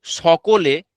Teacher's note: আমাদের উচ্চারণের সময় একটু যেন শীষ দেওয়ার ভাবটা বেশি থাকবে এটা হচ্ছে দন্তসয়ের উচ্চারণ মানে জিউবডা দাঁতের দিকে আসছে দন্তঃসয়ের জন্য আর জীবটা তালুর দিকে যাচ্ছে তালব্যস এর জন্য এইটুকু পার্থক্য আছে এবং আমাদের বেসিক্যালি উচ্চারণ হয় দন্তস্য।